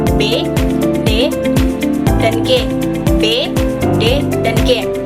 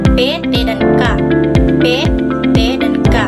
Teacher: Berbeda dengan B, D, B, D, dan G ee terdengar seperti bergetar, tetapi pada huruf P, T, dan K itu tidak bergetar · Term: pita suara bergetar